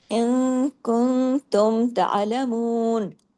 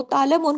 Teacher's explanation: عموماً آپ لوگ جب سبق سناتے ہیں نا تو اس کو جما کے عین کو پڑھتے نہیں ہیں، عین کی آواز میں کہیں کہیں کسی کسی کا جمع ہوا نظر آتا ہے، کسی کسی کا جمع ہوا نہیں نظر آتا، تو عین کو تا عین زبر تا، تا کے بعد جب عین پہ جائیں گے آواز گلے میں چلی جائے گی، لیکن آواز باریک رہے گی